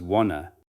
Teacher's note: You learned that the word want is pronounced clearly with a distinct beginning and end, but in real, natural, fast spoken English, want to often becomes wanna